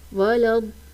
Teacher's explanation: پر دیکھیں مد کے بعد لام کے اوپر تشدید ہے تو جب بھی مد کے بعد تشدید والا حرف آئے گا تو وہاں پر جو مد بنے گی وہ مد لازم کہلائے گی اور اس کو 4 سے 5 الف کی مقدار کھینچ کر پڑھنا ہوتا ہے